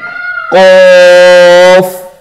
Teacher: تو اس کا طریقہ کیا ہے کہ زبان کا جو اینڈ والا حصہ پچھلی جانب سے وہاں سے نرم تالو کے حصے کے ساتھ زبان اور زبان کا اینڈ والا حصہ اور نرم تالو یہ دونوں کی اٹیچمنٹ ہوگی تو پھر قاف کی ساؤنڈ پریزنٹ ہوگی